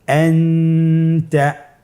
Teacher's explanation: নুন সাকিন অথবা তানবিনের পরে ইকফার 15টি হরফের যে কোনো একটি হরফ আসলে তাহলে নুন সাকিন তানবিনকে নাকের ভিতরে লুকিয়ে গুণনার সহিত পড়তে হবে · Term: ইখফা